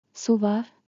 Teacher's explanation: With a rising tone turns into a question. Su var. Equals, is there water?